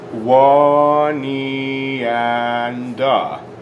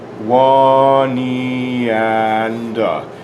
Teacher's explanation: we put the n on the next word